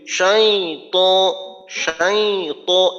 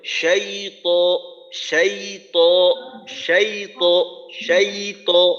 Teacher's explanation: শাই ত, শিন ইয়া ত, এর মাঝে এতটুকু অংশে নাকে নেওয়ার মতো কোনো আওয়াজ নেই। এখন যদি আমি এইভাবে বলি শাই ত, শাই ত, এই যে নাকে নিলাম, এই নাকে কিন্তু আমার ইচ্ছা মতো নিতে পারবো না, কারণ নাকে নেওয়ার জন্য একটা সিফাত আছে গুন্না।